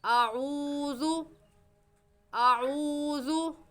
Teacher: वाव मद्दा को एक अलिफ के बराबर खींच कर पढ़ते हैं